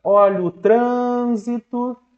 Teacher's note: a sílaba trans ganhou mais força. Então ela é a tônica.